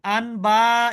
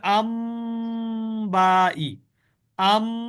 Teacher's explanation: এখানে ইকলাবে কি হয় পরিবর্তিত হয় এবং গুন্না হয় · নুন পরিবর্তিত হয়ে মিম হয়ে যাবে উচ্চারণে · এইখানে দেখেন নুন অক্ষরের পরে সাকিন আছে তারপরে বা আছে তাহলে স্বাভাবিকভাবে উচ্চারণ হওয়ার কথা আনবা হওয়ার কথা কিন্তু আনবাই না হয়ে এটা হবে আম্বাই আম এখানে আম নুনটা মিমের মিমে কনভার্ট হবে আর গুন্না হবে